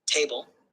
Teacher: table ta is stressed and ble is unstressed